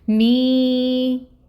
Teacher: یا ساکن سے پہلے اگر زیر کی حرکت ہو تو یا مد کا رول ہوتا ہے، اور اس کو 2 کاؤنٹس کے برابر لمبا کریں گے۔